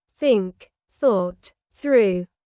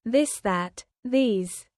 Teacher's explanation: For example, the sound in think or this. Put your tongue between your teeth and push air out for think. For this, your tongue touches the same position, but with your voice turned on.